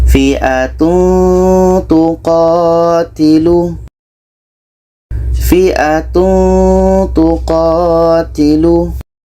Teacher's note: Ketika kita menyebut tanwin kita sudah merasakan huruf ta sehingga ada bunyi Eng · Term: ikhfa Hakiki